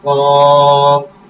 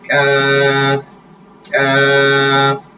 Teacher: কফটা হচ্ছে মোটা করে কফ মোটা কিন্তু কাফ পাতলা